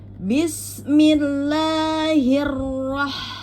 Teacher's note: diperjelas untuk ro yang bertasdid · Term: ro tasdid